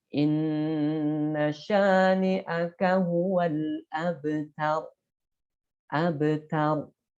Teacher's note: Ya, ini karena waqaf, kemudian harokatnya disukunkan atau dimatikan, direm, karena sebelumnya adalah huruf-huruf berharokat fathah, maka dibaca tebal, tafkhim.